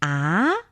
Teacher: that's the second tone with a little bit of question mark in the pronunciation